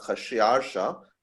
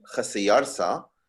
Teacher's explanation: the fact that Greek doesn't have a sh sound resulted in the sh of Khashiyarsha becoming Khasiyarsa, and then the kha was represented in Greek with the letter chi, which is an X letter, which is how the X came into English.